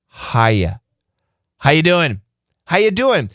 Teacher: the faster we say that, the R sound becomes a non-rhotic R, which means it becomes silent.